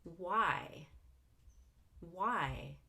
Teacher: we're going to go up on Y and down on Y all in one syllable it's a wh question that has to have falling intonation we